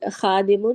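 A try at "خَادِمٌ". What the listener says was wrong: एक मिनट, दोबारा गलत क्यों बोल रही हैं? फिर सही बोले ना। फिर खादिम बोल रही है सिंगल हरकत के साथ।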